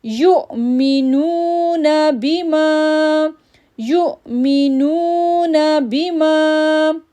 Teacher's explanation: یا کو جب حمزہ کے ساتھ جوڑیں گے تو ہیکپ ساؤنڈ بنے گا، پھر نو کو ہم کھینچیں گے کیونکہ واو ساکن سے پہلے پیش ہے، تو ہم پڑھیں گے یؤمنون بما۔